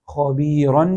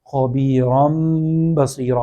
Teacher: نون کی بجائے میم کی آواز کو پڑھیں گے. اس کو کہتے ہیں اقلاب.